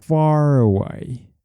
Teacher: it's better to pronounce them like this far away and you don't drop the r